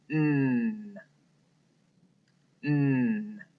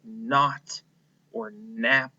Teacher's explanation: This is the sound where my tongue is pressed against my teeth.